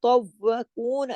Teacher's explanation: واو پہ تشدید ہے، 2 واو ہے، پورا ادا کرنا ہے، پہلے تو اور پھر وا، اور تو کو موٹا، تو کو موٹا لازمی کرنا ہے کیونکہ یہ موٹی فیملی کتبن جدن سے ہے.